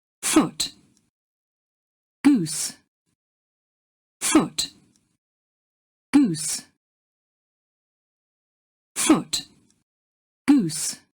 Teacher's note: The vowels in these words are different in Standard British English, but merge into the same sound in Scottish English, with both words using the goose vowel.